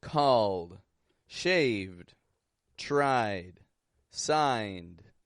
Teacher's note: voiced endings are getting a sound like a d called shaved tried signed it's a very light D and often · it's a very light D and often times it'll actually be a stop consonant · often times we will make a stop D but we're going to just lightly release it